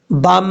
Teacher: با کو میم سے ملائیں گے، بیچ میں الف کو چھوڑ دیں گے